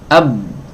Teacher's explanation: nafasnya tidak bisa ngalir karena ketutup, ya, suaranya juga nggak bisa ngalir